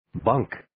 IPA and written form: bəŋk (Bunk)